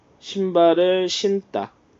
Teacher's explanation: 그 디귿이 쌍디귿으로 발음은 된다. 된 소리로 발음된다.